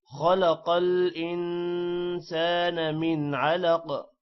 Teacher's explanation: من پر غنہ نہیں ہوگا کیونکہ آگے عین حروف حلقی ہے جس کی وجہ سے من پر غنہ نہیں ہوگا۔